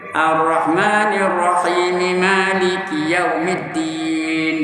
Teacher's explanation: Kalau nak wasal, nak sambung, jangan matikan mem tu.